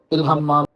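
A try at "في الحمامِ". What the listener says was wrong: فی ارے آخر والی حرکت کو ظاہر کرو بھائی.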